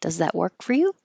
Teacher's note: you don't hear work. You hold that K.